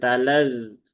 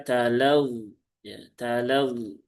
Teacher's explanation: bertasydid maka talad ya talad ya bukan talaz kalau talaz jadi dzal nanti ya karena dal kan tempat keluarnya sama